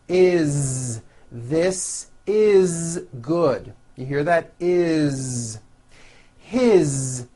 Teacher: all these words that I'm going to show you now are written with an S however they are all pronounced with a voiced Z